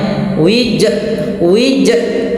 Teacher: dia menambahkan huruf hamzah pada lafal qalqalahnya